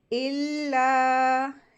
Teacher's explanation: اللہ کے ساتھ الف مد لگی ہوتی ہے، اس کو 2 حرکات کھینچیں گے